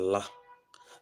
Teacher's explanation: La is described as voice alveolar lateral. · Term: lateral sound